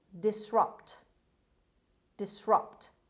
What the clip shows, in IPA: dɪsˈrʌpt